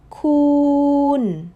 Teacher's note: Feel your mouth hold that vowel a whole beat longer on khoon.